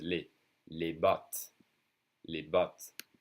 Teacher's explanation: if it's not followed by a vowel, I don't say the S, it's just les.